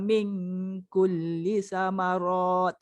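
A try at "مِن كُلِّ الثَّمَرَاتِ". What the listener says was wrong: Ada sabdu tertinggal. Min kullis samarat.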